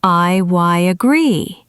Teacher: in I agree, there is a y sound inserted. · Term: intrusion